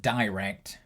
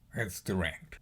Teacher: Generally in England, we use the longer version of the vowel, like I or O. But in America, they tend to use the shorter version, I.